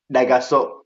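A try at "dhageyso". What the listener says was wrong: daganso, daganso with an N, daganso.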